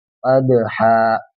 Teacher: دال پہ ساکن ہے تو قلقلہ ہوگا، آواز کو تھوڑا اچھالیں گے